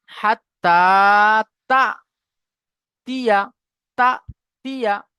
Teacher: সাকিন যুক্ত হামজাকে একটু ঝাটকা দিয়ে পড়তে হয় তাহলে আমরা এখানে একটু ঝাটকা দিয়ে পড়বো কেমনভাবে হাততা তিয়া তাতিয়া